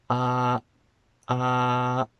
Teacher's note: A glottal stop is when your throat closes just a little bit and it prevents the air from coming out. So if I say ah and then I close my throat, ah, ah, then you can hear my voice stopped.